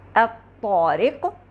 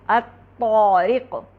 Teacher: الطارق، یہاں دیکھیں آپ کی زبان آپ کو محسوس ہوگا کہ زیادہ اوپر کی طرف اٹھ رہی ہے بنسبت قاف کے، یعنی طا کے لیے زبان زیادہ اوپر تالو سے قریب ہے اور طا میں ایک گونج کی آواز ہے، الطارق، جبکہ قاف میں ایسا نہیں ہے۔ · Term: اطباق